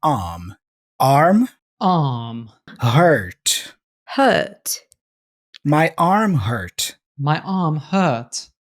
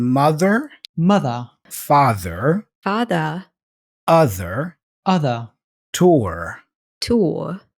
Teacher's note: in British English the tendency is not to pronounce that R especially after vowels or before consonants